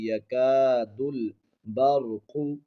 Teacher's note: بعد الف ہے، ایک الف کی مقدار کھینچیں گے، یکاد البرق، یہاں پر را کو موٹا پڑھیں گے، قاف کو بھی موٹا پڑھیں گے